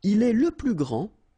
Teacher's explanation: grand, so you don't pronounce the final D, will be exactly the same as the plural form for the masculine, grand.